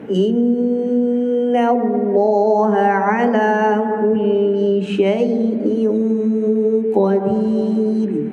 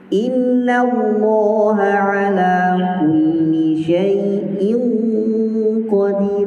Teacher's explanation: Berarti inna lebih panjang gunnahnya daripada syai'in. Tak boleh dibalik.